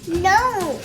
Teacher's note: The n sound comes kind of from a vibration in your nose.